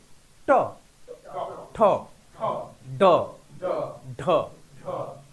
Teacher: জীবের ডগা বা আগাটা স্পর্শ করছে মূর্ধাতে দেখো জীবটা উল্টে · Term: মূর্ধন্য